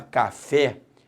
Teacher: quando você fala café a sílaba tônica é o fé e pare porque se não fosse o fé eu falaria Cafe